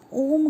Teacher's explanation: इसको उच्चारित करने में ह्रस्व और दीर्घ से ज़्यादा समय लगता है, 3 गुना समय लगता है, 3 मात्रा का समय लगता है। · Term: प्लुत स्वर